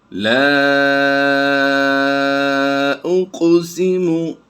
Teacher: لا اقسم، لام الف زبر لا، الف مدہ کے بعد حمزہ الف ٹائپ آیا ہے دوسرے کلمے میں، تو ہم یہاں پر یہ مد جو ہے مد منفصل کرتے ہوئے کم از کم 2-2.5 الف اس کو کھینچ کر پڑھیں گے